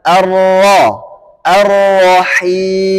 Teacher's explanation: ketika berharakat fathah maka tebal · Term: tafkhim tebal